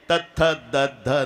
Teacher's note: दात असेल ना तर जीभ धक्काच मारेल. हे दंते आहे.